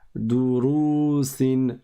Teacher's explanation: on fait attention à ne pas prolonger la première syllabe, étant donné qu'il n'y a pas de prolongation après le del. Il y a juste une dhamma.